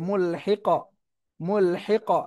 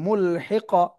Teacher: লাস্টে কফ সাকিন, এখানে কলকলা করতে হবে